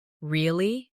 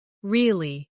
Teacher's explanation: Say, really? With a rising tone to show surprise. Now say, really? With a falling tone to show you don't believe someone. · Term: intonation